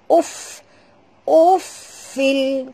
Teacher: Kita pun tahu bila Fa itu mati, kena keluarkan bunyi hammasnya. Ya, macam mana nak bunyi? Ketap gigi atas ke bibir bawah.